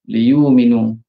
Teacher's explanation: Oleh kerana sebelum hamzah mati tu baris depan, tukarkan jadi waw.